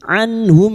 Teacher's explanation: Nun sukun dibaca jelas tanpa mendengung. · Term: idhar halqi